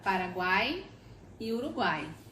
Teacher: no final da palavra Paraguai a gente tem o encontro de uma vogal e de duas semivogais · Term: tritongo